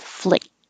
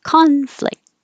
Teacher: ah conflict you don't really make a k or a t your tongue goes to the K position in the back flick at the same time your tongue is going up for the T so it's kind of pressed against the roof of your mouth